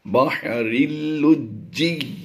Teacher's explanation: بحرل، را کو ہم نے آگے لام مشدد کے ساتھ ملانا ہے تو یہ لفظ بن جائے گا را لام دو زیر رل. اگرچہ تنوین کے بعد یہاں پر حروف یرملون میں سے لام ہے تو یہاں پر ادغام بلا غنہ ہوگا